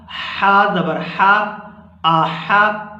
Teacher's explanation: حا کو گلے سے اچھی طرح ادا کریں گے